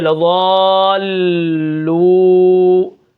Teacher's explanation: وہ اس لیے ہے کہ تشدید جو ہے وہ دو بار پڑھی جاتی ہے، ایک بار پیچھے والے حرف کے ساتھ مل کر اور دوسری مرتبہ اپنی حرکت کے موافق، تو اس سے پتہ چل جاتا ہے کہ یہاں پر تشدید ادا کرنی ہے اور دو حرفوں جتنی دیر لگا کر پڑھنا ہے